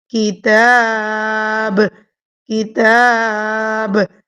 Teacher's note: تا کے اوپر کھڑی زبر اسٹریچ کریں گی، اور چونکہ میں یہاں پر وقف کر رہی ہوں، رک رہی ہوں، تو میں با کی زبر کو نہیں پڑھوں گی، ٹھیک ہے۔